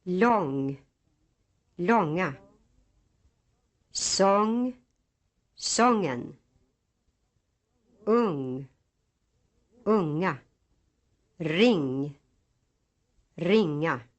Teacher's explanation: no G sound is heard at the end, as some English speakers have. This is true in Swedish even if the ing is followed by a vowel.